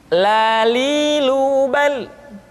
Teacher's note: huruf la diucapkan dengan mengangkat ujung lidah kita, dengan disentuhkan dengan langit-langit.